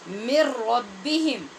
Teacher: آپ نے دیکھا نون پڑھتے ہوئے ہماری آواز سے نون کا کوئی وجود ہی محسوس نہیں ہو رہا. مر ربہم، اس میں غنہ نہیں ہوا، مکمل طور پہ نون را کے اندر مدغم ہو گئی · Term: بے غنہ